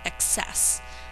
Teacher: the emphasis on this word is on the second syllable